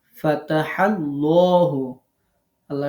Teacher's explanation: আল্লাহ শব্দের লামের আগে জবর আসছে ল হবে পোর হবে